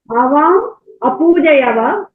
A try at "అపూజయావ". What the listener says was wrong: యావా లేదా పూజయవా? ఆవా కదా, యావా వస్తుంది. ఆ దీర్ఘం ఉంది కదా. ఆవా పూజయావా